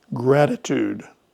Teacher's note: That first T is a flap T sound